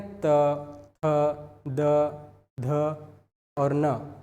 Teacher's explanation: दंत्य जिसका उच्चारण दांत के सहारे से जिसका उच्चारण हो रहा है